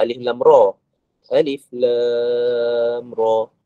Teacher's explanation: Kalau mukhaffaf ni tak ada dengung. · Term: mad lazim harfi mukhaffaf